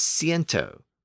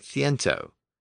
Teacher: except in Castilian Spanish where the sound shifted to more of a th sound